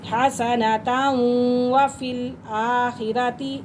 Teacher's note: را کے پاس زبر اور پیش ہو تو وہ پور کر کے پڑھی جاتی ہے را